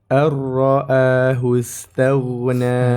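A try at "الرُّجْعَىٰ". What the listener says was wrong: Sempurnakan huruf ra yang terbaca dengan tebal. Ditebalkan dengan cara menaikkan pangkal lidah kita, lidah bagian belakang ke atas. Ar-ra'ahu istaghna.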